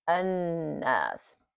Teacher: So we read it like an-nas. Don't even pronounce the lam.